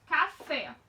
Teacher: a sílaba mais forte é a última, ou seja, é fé. Então, nós temos aí uma oxítona.